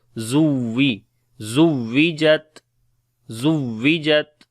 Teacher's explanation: Za we read bit hard. On the waw we make nabar. Like the waw sound we make bit louder.